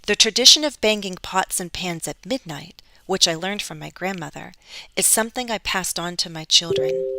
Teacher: you can listen for the pause when I'm pausing I'm setting off the adjective Clause because it's extra information